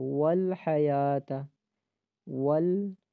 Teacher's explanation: واو کو ہونٹ گول ہوں گے اور واو کو کھینچنا بھی نہیں ہے